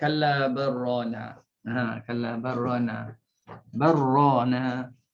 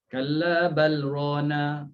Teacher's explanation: Kena faham, masukkan lam dalam ra.